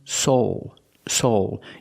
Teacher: a long o plus the dark l